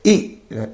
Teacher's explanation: also moved forward okay to produce this e sound what happens the tongue is positioned high and also forward